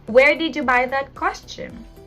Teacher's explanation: You ask a question, at the end, your intonation is rising.